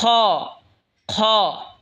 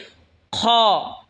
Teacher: খ হলকের শেষ ভাগ হয়তো উচ্চারণ হবে খ।